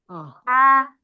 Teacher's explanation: H tipis itu anginnya dulu yang keluar. H. Baru suaranya belakangan.